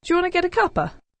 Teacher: the first two words do you there we have an example of coalescence assimilation · wanna with get uh they've linked together so we've got um a word ending with a consonant sound get linking with the following vowel sound to give us getter